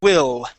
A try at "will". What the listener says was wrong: Okay, so when you're pronouncing your L, okay, right now you're pronouncing it sort of like an oo sound, saying will. Okay, so you want to open your mouth a little bit, okay, all right, and you want your tongue to curve and touch right before your teeth.